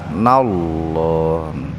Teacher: Lafad Allahnya atau huruf lamnya dibaca tebal, nallah. Warusulihi madsilah qasirah. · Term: tafhim